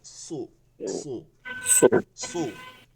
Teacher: সু মোটা করে বলতে হবে সু, তখন আর সু বলা যাবে না, তখন মোটা করে সু। হ্যাঁ, ঠোঁট দুইটা একটু গোল হয়ে যাবে, জিব্বাটা একটু মোটা হয়ে যাবে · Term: মোটা সদ